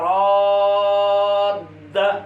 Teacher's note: پہلی دال کو دوسری میں ادغام کر دیں گے، یہ بن جائے گا راد